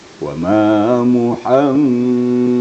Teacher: Berdengung maksudnya sengau. Ya, suara ke hidung. Kapasitasnya sekitar 3 ketukan atau 3 harakat ya.